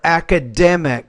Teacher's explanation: So stress is on that third syllable there.